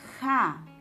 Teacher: en la primera sílaba, ja, podemos notar el fonema velar sordo